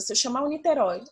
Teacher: se eu chamar o Niterói, o roi vai ser a sílaba tônica. E como ela é oxítona, terminada em oi, ela vai ser acentuada.